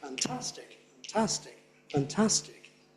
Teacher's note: We all know the primary stress is on task.